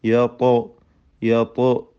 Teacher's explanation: യത്തോ എന്നതിലെ ത്വാഇൻ്റെ സുക്കൂനിനെ ഖൽഖല ചെയ്യേണ്ടതാണ്. ശബ്ദം ചലിപ്പിച്ച് ഹറക്കത്ത് പോലെ ഉച്ചരിക്കണം.